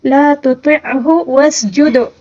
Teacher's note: دال کے اوپر جو ساکن ہے اس کو قلقلے کے ساتھ پڑھنا ہوگا